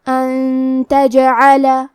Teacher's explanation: کلمت ان کے آخری میں نون ساکن ہے، پھر حرف تا آتا ہے. کلمت تجعل تا حروف الاخفاء میں سے ہے تو ہم یہ حکم کو غنہ کے ساتھ ادا کریں گے. ان تجعل کلمت تجعل میں یہاں بھی حرف الجیم کو قلقلہ سے پڑھیں گے، مطلب یہ حرف کو ہلاتے ہوئے یہ کلمہ کو پڑھیں گے.